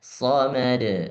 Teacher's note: qalqalahnya langsung tidak ada jedah somad. Pantulannya langsung jangan somad.